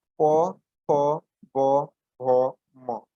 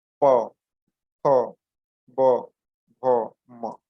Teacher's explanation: होस्ट स्वर प फ ब भ म, ये होठों से बोला जाने वाला, यानी होठों से के द्वारा उच्चारण किया जाने वाला होठ स्वर है, यानी दोनों होठ एक दूसरे से चिपकते हैं।